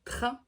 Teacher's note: un R qui va être au fond de la gorge